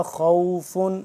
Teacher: خا کو موٹا پڑھیں گے پور کر کے